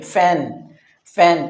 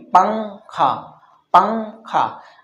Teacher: ایک ظاہر کر کے بولنا جو عام طور سے بولا جاتا ہے، اور ایک چھپا کر کے بھی بولنا ہوتا ہے جس میں زبان اوپر ٹچ نہیں ہوتی، زبان بیچ میں لٹکی ہوئی رہتی ہے۔